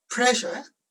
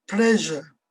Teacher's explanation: with a voiced consonant we're using our vocal chord to make the vibration for this sound